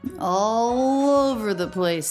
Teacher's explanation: the most stress here really is in the vowel or the diphthong o